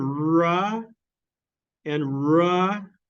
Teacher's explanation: your tongue is pointing towards your alveolar Ridge